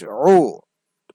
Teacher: আইন পেশ উ কণ্ঠনালীর মধ্যখান থেকে